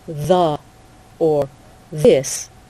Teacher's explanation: It should vibrate in your throat. Your tongue, the tip of your tongue should be touching your front teeth.